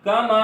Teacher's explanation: یہاں پر الف مدہ ہو رہا ہے, اس کو ایک الف اتنا لمبا کریں گے